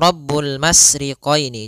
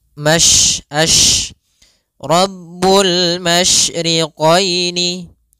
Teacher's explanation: Tafasyi adalah salah satu sifat yang terkandung di dalam huruf shin, yaitu menyebarnya suara. Sehingga jangan dibaca Rabbul masriqaini, jangan dengan huruf sin, tapi dia huruf shin.